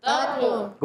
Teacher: لام الف زر لا, لام مشدد ہے, ذرا رک کر ادا کریں گے، اور ایک الف کھینچنا بھی ہے، لام الف زبر لا، علی مدہ بھی ایک کھینچیں گے، اور تا کو طو سے ملائیں گے، تا اور طو دونوں کا مخرج ایک ہی ہے، تا باریک ہو جائے گا، طو موٹا ہو جائے گا